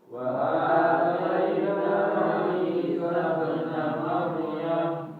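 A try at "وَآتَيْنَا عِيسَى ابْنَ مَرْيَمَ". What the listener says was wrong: Nah, ini ro-nya tadi masih ada yang tipis ya. Sekali lagi.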